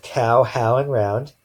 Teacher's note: these sounds are all really two sounds but they happen so often together that they might act like one so these are called diphthongs so we've looked